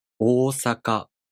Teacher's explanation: You elongate a vowel by 1 beat, so you pronounce these 2 kanas twice as long as sa or ka. Osaka. The words with Japanese long vowels are frequently mispronounced by Japanese learners.